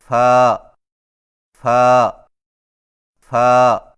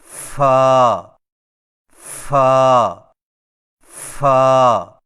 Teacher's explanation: فا کی ادائیگی میں ثنائے اولیاء کے سروں کو نچلے ہونٹ کے گیلے حصے پر لگا کر باریک آواز میں پڑھیں